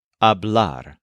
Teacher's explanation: Let's start by looking at where this is true for hablar. The infinitive puts the stress on ar, hablar, not on the stem or the first syllable.